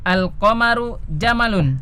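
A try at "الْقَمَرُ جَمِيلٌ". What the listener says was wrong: Jamilun ya, dilihat tulisannya. Jamalun apa jamalun? Jamalun onta. Ya, kalau al-qamaru jamalun bulan itu onta kan tidak mungkin ya.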